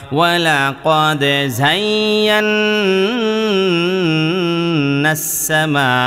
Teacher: হরকতের বামে নুনে বা মিমে তাসদিদ হইলে ওয়াজিব গুন্না করিয়া পড়িতে হয়